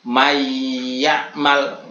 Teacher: Ini namanya gunah mudghim. Gunahnya atau mendengungnya ini karena memasukkan nun kepada ya.